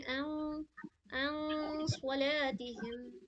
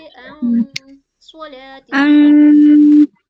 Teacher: नून की साउंड को अन नाक में छुपाएंगे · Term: गुन्ना